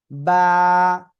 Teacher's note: এই অক্ষরটার নাম হলো বা এই যে দুই ঠোঁট দেখতে পাচ্ছেন দুই ঠোঁটের ভিজা অংশ থেকে অক্ষরটি উচ্চারিত হয়